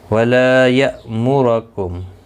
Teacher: بما کنتم تعلمون الکتاب وبما کنتم تدرسون ولا یأمرکم، ولا لا الف مدہ ہے، ایک الف کی مقدار کے برابر کھینچ کر پڑھیں گے۔ حمزہ ساکن کو جھٹکی کے ساتھ ادا کریں گے